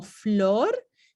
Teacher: Si miramos aquí abajo en el dibujo, vemos que la consonante F como flor tiene un punto de articulación labio-dental porque el articulador activo, que es el labio inferior, tiene que subir y tocar los dientes superiores para pronunciarla